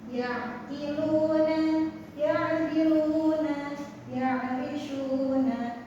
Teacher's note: untuk ainnya ini makhrajnya ada di tengah tenggorokan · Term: ain sukun